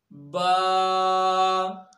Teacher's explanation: बा दोनों होंठों के तरी वाले हिस्से को मिलाने से अदा होती है। होंठ के 2 हिस्से होते हैं, जो बैरूनी हिस्सा है ये खुश्क हिस्सा कहलाता है और अंदरूनी हिस्सा तर हिस्सा कहलाता है।